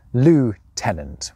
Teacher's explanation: Nowadays it’s the Americans who come closest with their pronunciation of loo-tenant